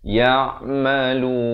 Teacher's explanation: Ain di pertengahan kerongkong